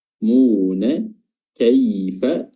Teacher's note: ada ya sukun yang didahului oleh fathah, ya, dia memiliki sifat lin